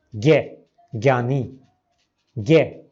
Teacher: संस्कृत में उसका उच्चारण जो है शुद्ध है, ज्य है, वह संयुक्त है ज और य का। लेकिन हिंदी और नेपाली में इसको ज़्यादातर लोग ग और य के संयुक्त की तरह बोलते हैं